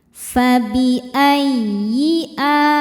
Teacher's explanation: Ya tasydid yang tidak didahului nun sukun atau tanwin, maka jangan ditahan bunyinya cukup ditekan pakai inaber, naikkan intonasi suara kita.